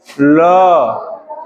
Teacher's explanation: हवा पार्श्व से गुजर रही है, ठीक है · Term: पार्श्विक वर्ण